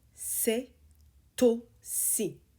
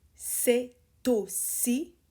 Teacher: we make a liaison, c'est aussi. C'est aussi, with the T.